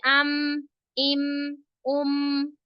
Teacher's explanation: मीम के अंदर हम होठों का जो बाहर वाला हिस्सा होता है ना, खुश्की वाला जो हिस्सा होता है, उसको जब मिलाते हैं तो हमारे पास अदा हो जाता है मीम। ठीक है, मीम जो बाहर वाला हिस्से हैं होठों के, उनको जब मिलाएंगे तो अदा हो जाएगा मीम।